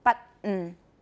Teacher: I have a glottal stop, but usually it's an unreleased T plus a glottal stop.